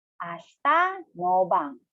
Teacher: when saying ashita, you should say ashta, silent E or silent I in English